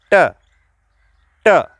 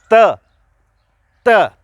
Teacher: परंतु आवाज जब आती है त त, तो आपकी जीभ है वो दांतों के जस्ट पीछे की ओर घुस जाती है, इसलिए इनको दंत्य बोलेंगे।